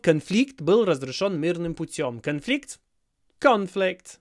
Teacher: just move the stress to the first syllable